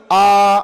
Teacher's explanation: ఆ దీర్ఘాక్షరం ఏదైతే ఉందో అది ద్విమాత్రాకాలం పలకాలట